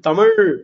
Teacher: எல் இந்த இந்த ல்னு சொல்லும்போது நாக்கு எங்க போகுது பாருங்க தமிழின் சிறப்பானது தமிழ் அப்படிங்கும் போது நாக்கு அப்படியே உள்ள போயிரும் ஓகேங்களா அதே மாதிரி ங் இதெல்லாம் மெல்லிதாக இருக்கும் மெய்யெழுத்து மெல்லிதாகவும் வல்லின எழுத்து